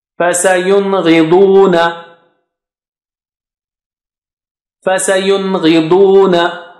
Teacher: gha is high sounding letter and da is very thick and high. So this is high and this is very thick and high.